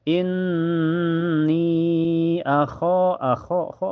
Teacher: ada alif sebelumnya harokat fathah di kho dibaca panjang 2 harokat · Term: mad tabi'i